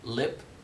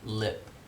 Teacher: So there's a little secondary velarization there, even though it's not as much velarization as in the dark syllable coda L